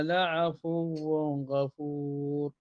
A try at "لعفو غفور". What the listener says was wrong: لا ما فيش غنة لعفو غفور إظهار